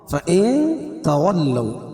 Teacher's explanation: فَإِن تَوَلَّوْا فَإِنَّ اللَّهَ، فَإِن تَوَلَّوْا اخفا حقیقی، کیونکہ نون ساکن کے بعد حروف اخفا کے 15 حرفوں میں سے تا ہے تو یہاں ناک میں آواز کو چھپا کر پڑھیں گے